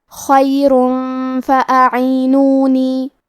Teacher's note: کلمت فاعینونی فا حروف الاخفاء میں سے ہے اور اخفاء کا معنی ہے چھپا دینا، تو ہم تنوین کو چھپاتے ہوئے اور غنہ کے ساتھ یہ حکم کو ادا کریں گے